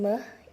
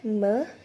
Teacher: Dalam pengucapan me itu ada udara yang keluar melalui hidung. This tell you that there is an element of nasality to this consonant sound. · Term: konsonan hidung